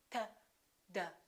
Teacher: They also have the same point of articulation because in both of those cases, the tongue is touching directly behind the teeth